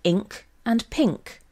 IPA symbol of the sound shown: ŋ